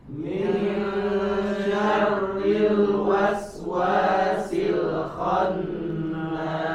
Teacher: nun sukunnya disamarkan, kemudian kita posisinya bersiap-siap untuk membaca huruf shin · Di sini huruf shin maka dibaca tipis, bukan sya, ditipiskan suaranya. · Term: ikhfa